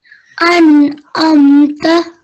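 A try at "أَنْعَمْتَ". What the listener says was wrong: An amta. So we don't want to hold on the meme. We just say the meme softly. An amta.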